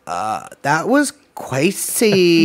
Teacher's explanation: I'm trying to get the vocal fry